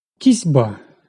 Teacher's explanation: Глухий «сі» під впливом дзвінкого «б» перетворюється на дзвінкий «зі».